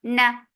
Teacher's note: This gunna is akmal, so keep the sound in your nose for a longer time. And the fatha is very short.